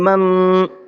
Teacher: نون ساکن ہے اور اس کے بعد میں کاف ہے، اخفا کے حرفوں میں سے ایک حرف ہے تو نون کی آواز کو ناک میں چھپائیں گے